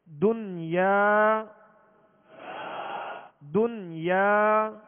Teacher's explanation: اب اس کو دوئیں یا نہیں پڑھیں گے، اگر دوئیں یا پڑھیں گے تو یہ ادغام ہو جائے گا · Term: اظہار مطلق